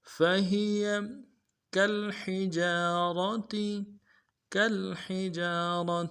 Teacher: کاف کو لام کے ساتھ ملانا ہے، لام کے اوپر جب جزم ہو تو غنہ نہیں ہوگا · ہا کو گہرائی سے ادا کریں گے